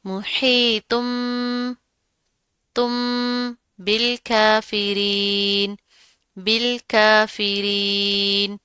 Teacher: اس ہا کو، حلق والی ہا کو، دو آنکھوں والی ہا سے تبدیل نہیں کرنا ہے